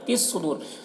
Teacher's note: صاد یہاں پر مشدد حرف ہے تو پیچھے والے متحرک حرف تا سے مل کر پڑھا جائے گا، صاد کو پر پڑھیں گے